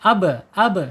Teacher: sifatnya ada di alqalqalah qalqalah ketika dia sukun · asyafatain ya dua bibir kemudian sifatnya ada di asyiddah